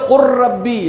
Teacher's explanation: جب کبھی لام ساکن ہو اور اس کے بعد حرف را آئے تو پھر یہ لام نہیں پڑھا جائے گا اور رے کے اوپر تشدید دے کر ہم پڑھیں گے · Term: لام کا رے میں ادغام